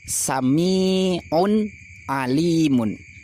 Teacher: pada lafaz sami'un ini tanwinnya ketika dibaca wasol jadi suaranya nun